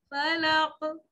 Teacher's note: اعوذ، لال نرمی سے بغیر سیٹی کے، اعوذ برب الفلق، فلق، قاف سے ہلکا سا ہلائیں گے، قلقلے کا مطلب نرمی سے ہلانا، سختی نہیں کرنی